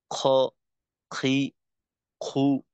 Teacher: গইন এবং খ হলো হলকের শেষ থেকে